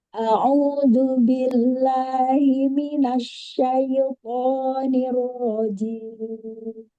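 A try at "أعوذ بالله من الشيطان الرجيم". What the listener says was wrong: Wazan mimnya ditambahkan lagi Mina.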